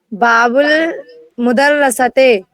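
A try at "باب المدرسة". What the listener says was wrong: نہ مدرستے نہیں ہے، باب المدرستے، مدر مت کریے، مدرستے، دال کو ساکن کریے۔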